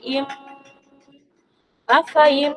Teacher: এখানে মিমের উপর তাসদিদ রয়েছে, তাই এটা মিম মুসাদ্দাদ। এখানে এক আলিফ পরিমাণ গুণনা সহকারে পড়তে হবে, এটা ওয়াজিব গুণনা